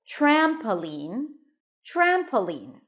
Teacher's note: the primary stress is on the first syllable